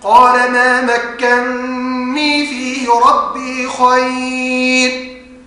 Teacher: فحفص هنا في هذه الكلمة أضغم النون الأولى في الثانية